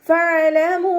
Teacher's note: ഫഅലമൂ, ഫ ലൈറ്റാക്കിയിട്ട് ഉച്ചരിക്കുക. മേലെ മുൻപല്ലിൻ്റെ അറ്റം താഴെ ചുണ്ടിൻ്റെ ഉൾവശത്ത് നനഞ്ഞ ഭാഗത്ത് വെക്കുക. അയിൻ കൽക്കല ലെറ്ററില്ലാത്തത് കൊണ്ട് ഹാഫ് സുക്കൂന് കൊടുക്കുക.